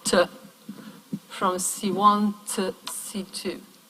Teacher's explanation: the weak form would simply have a schwa